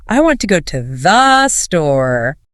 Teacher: The important words are big. Want. Store. The small words are tiny.